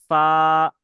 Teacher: দাঁতের আগা জিভ, দিয়ে উচ্চারণ করতে হয় সা